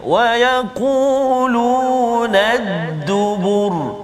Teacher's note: Huruf ra yang berbaris tu kalau kita perhatikan dua contoh tadi, satu ra berbaris depan, satu ra berbaris atas, tapi kita matikan dia sebab kita waqaf dan kita tengok huruf sebelum dia huruf zal dan juga huruf ba, kedua-dua tu baris depan, maka bunyi ra tu bunyi tebal. Kita tafkhimkan bacaan kita pada huruf ra tersebut.